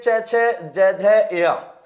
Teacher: इनके उच्चारण में जीवा तालु की ओर जाती है, इसलिए इनको तालव्य वर्ण कहते हैं